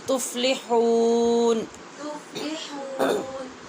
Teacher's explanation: تفلحون میں ناک میں آواز نہیں جانی چاہیے.